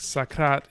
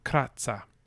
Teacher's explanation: sakrat is very iambic we have this weak strong rhythm going on in the language